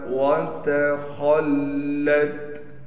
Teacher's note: خا کے بعد لام پر تشدید ہونے کی وجہ سے لام پر ٹھہراؤ کیا جائے گا۔